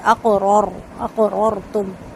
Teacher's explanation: قاف پہ قلقلہ کرنے کے بعد رو کو رو سے ملائیں گے